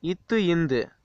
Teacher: நாவின் நுனி மேல்வாய் பல்லின் அடி